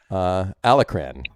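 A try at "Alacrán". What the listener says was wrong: You got to roll that R.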